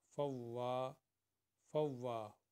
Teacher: واؤ کو 2 دفعہ پڑھیں گے کیونکہ واؤ کے اوپر شد ہے